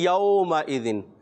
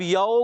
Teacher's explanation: यौमइज़िन, अब इसमें हुर्फ़े लीन है, वाव लीन है, वाव साकिन से पहले ज़बर आ गया। वाव लीन को बग़ैर खींचे, बग़ैर झटका दिए नरमी के साथ मारूफ पढ़ते हैं।